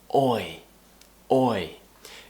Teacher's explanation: they start with a round shape in your mouth and then lift your tongue up and smile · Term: diphthong